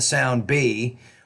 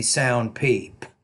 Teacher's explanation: the vocal folds are kind of held either loosely together to create vibration, for example, in the sound B, or the vocal folds are kind of apart and it creates more of a voiceless consonant, as in the sound P, right?